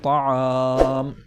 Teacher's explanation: یہاں پر مد ہوگا اور 3 الف کے برابر کھینچ کر پڑھا جائے گا، جیسے طعام۔ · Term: مد سکون عارضی وقفی